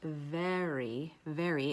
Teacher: there's a bit of a forward tongue arch because that's a forward vowel